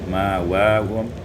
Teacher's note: ma'wahum ibdalul hamzati alifan, ditukar hamzah dengan alif